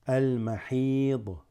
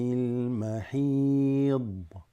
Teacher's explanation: This ha extends it with the ya.